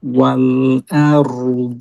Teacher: ওয়াও খেয়াল করেন, ওয়াওটা মোটা হয়ে যাচ্ছে।